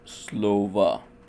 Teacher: The vowel after the stress is likewise pronounced as a ə as you can hear in the word Слово.